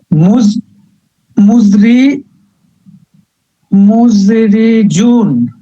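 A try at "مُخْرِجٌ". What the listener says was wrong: না, এটা শুরুতে খ, তাই না? মুখরিজুন।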